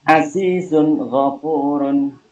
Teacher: Azizun ghafurun termasuk bacaan idhar halki. Alasannya ada dhamma tanwin ketemu dengan huruf ghain. Cara bacanya jelas.